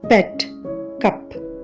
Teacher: గొంతులో vocal cords కంపించడం గమనించవచ్చు next పెట్ కప్ ఇక్కడ అన్వాయిస్డ్ ఎందుకంటే ఈ శబ్దాన్ని ఉచ్చరించేటప్పుడు గొంతులో వోకల్ కార్డ్స్ కంపించకపోవడం గమనించవచ్చు